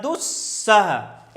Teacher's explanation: अब यहाँ विसर्ग पहले उ है और उ के बाद विसर्ग है, विसर्ग के बाद सा है तो विसर्ग का सा हो जाएगा